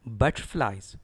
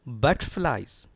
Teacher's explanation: Stress is on BUT.